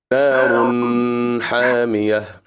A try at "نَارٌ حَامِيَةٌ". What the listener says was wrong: We made it long with gunna. But it's idhar because of the hash, so it should be normal. Narun hamiyah. Narun hamiyah.